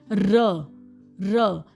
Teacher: Sounds which are produced by raising the tongue to the area just behind the अल्वियोलस ridge · पोस्ट का मतलब होता है behind. Sounds which are produced by raising the tongue to the area just behind the alveolar ridge. अब alveolar ridge पे तो touch हुए थे alveolar sound, अब पोस्ट एल्वियोलर कहाँ टच होंगे, थोड़ा सा और पीछे, एल्वियोलर रिज से और पीछे हमारी जीभ जब जाएगी। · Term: पोस्ट अल्वियोलस, पोस्ट एल्वियोलर साउंड